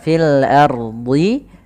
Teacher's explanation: karena ro-nya sebelumnya adalah huruf fathah ro sukun sebelumnya fathah maka dibaca tebal · Jangan sampai kita membaca dengan fil ardhi r-nya tipis padahal r-nya tebal karena Kenapa dibaca tebal karena ro-nya sebelumnya adalah huruf fathah ro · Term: ro tebal